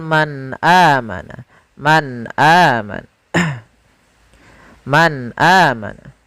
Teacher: suara nunnya harus jelas, tidak boleh ditahan, tidak boleh man amana, tidak, tapi langsung saja man amana. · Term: izhar